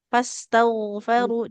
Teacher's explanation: Jadi ginnya tebal dan mengalir suara. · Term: ghainnya